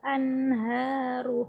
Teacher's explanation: Karena nun sukun bertemu dengan ha. Ha tadi tempatnya ada di pangkal tenggorokan. Cara membacanya adalah jelas ya. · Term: idhar halki